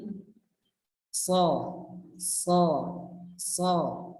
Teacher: Aksolisan adalah pangkal lidah. Jadi lidah yang paling belakang itu dia naik ke atas. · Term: isti'la